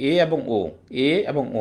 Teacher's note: এবার একটু জিহ্বার জোরটা নিজে থাকবে, এ এবং ও, এ এবং ও। আমরা যদি উচ্চারণ করি এ এবং ও, তাহলে কিন্তু জিহ্বাটা আমাদের কি যাচ্ছে? একটু নিচে পড়তেছে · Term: উচ্চ মধ্য